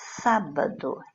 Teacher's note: identificar a sílaba tônica na palavra na antepenúltima sílaba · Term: proparoxítona